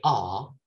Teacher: ah is the lowest vowel. That means you really push your tongue to the bottom of your mouth.